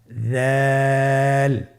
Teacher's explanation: উচ্চারণ করার সময় অবশ্যই 3 আলিফ টেনে পড়তে হবে। দালের মাখরাজ হলো জিহ্বার আগা সামনের উপরের 2 দাঁতের আগার সঙ্গে লাগিয়ে উচ্চারিত হয়